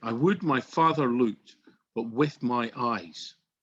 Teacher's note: the stress or the emphasis goes on every second syllable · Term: iambic pentameter